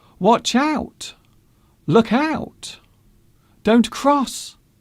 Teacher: the last word of the sentence often being higher in tone than the others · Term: intonation of a warning